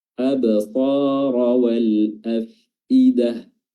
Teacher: Huruf ba-nya di sini qalqalah sughra karena berada di pertengahan bacaan.